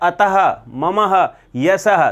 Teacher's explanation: तो पीछे ध्वनि किसकी आ रही है? अः की ध्वनि आ रही है। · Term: विसर्ग